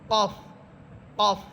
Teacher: কফ হচ্ছে জিহ্বার গোড়া উপরে তালুর সাথে লাগবে। কফ যত ভিতর থেকে, যত একবারে গোড়া থেকে বলতে পারেন, কফ, কফ।